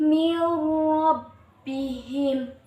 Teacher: idgham bilagunnah berarti memasukkan atau meleburkan tanpa dengung